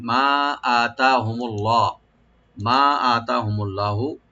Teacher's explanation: মা এখানে মিমটাকে ওপেন করে 3 আলিফ টানবেন মধ্যে মুনফাসিল